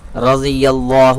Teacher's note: رضی اللہ، لفظ اللہ کے لام سے پہلے یا کے اوپر زبر ہے، لفظ اللہ کے لام کو پور کریں گے، یعنی کہ موٹا پڑھیں گے